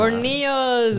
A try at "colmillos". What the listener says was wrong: No, not corneos. Colmillos. No R. L. colmillos. No.